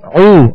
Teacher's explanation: یہاں واو مدہ ہے. اب اس کو ہم نے 2 حرکت کے برابر کھینچا